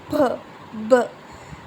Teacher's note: You can notice that first we fill up our mouth with the air, then we suddenly burst it. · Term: plosive sound